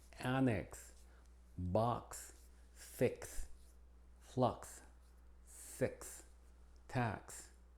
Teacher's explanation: La X, como en español, tiene varias pronunciaciones. Primero es como KS al final de las palabras